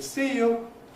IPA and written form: ˈsiː ju (see you)